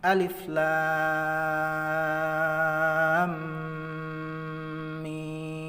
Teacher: Jadi antara lam ke mim maka akan timbul bacaan idgham, yakni mim mati bertemu dengan mim, idgham mimi atau idgham misli juga bisa. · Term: idgham mitsli